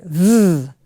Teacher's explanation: There should be a little bit of a rumble. It's a voiced sound.